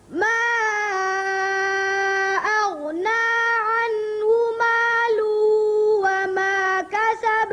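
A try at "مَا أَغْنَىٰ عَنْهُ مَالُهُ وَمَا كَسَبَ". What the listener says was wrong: مالوہ ظاہر کر کے پڑھیں، اچھی طرح لام کی پیش ظاہر کریں، پھر پڑھیں یہاں سے.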